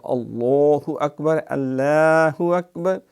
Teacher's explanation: لفظ اللہ کا لام تفخیم سے موٹا پڑھا جاتا ہے